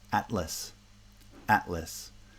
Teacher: the t is in the first syllable it's the coda of the first syllable and the l is in the onset of the second syllable